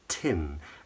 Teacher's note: So it's a vowel pronounced with wider lips, tin, and the tongue is much higher and further forward.